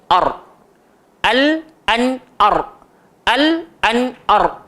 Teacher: So bila kita sebut ra, dia tak melibatkan bibir. Cukup hujung lidah langgar langit.